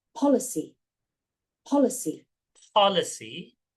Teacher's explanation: Ada A yang tidak terbalik. A yang terbalik ini suaranya cenderung ke O ya